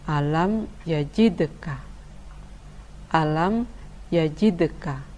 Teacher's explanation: Tapi qalqalah sughra tetap dibaca memantul, namun kurang jelas, tidak sampai misalnya yajidka, yajidka, min qablikum, min qablikum.